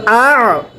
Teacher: হামজা আইন জবর আ, গলার মধ্যে চাপ দিয়ে পড়েন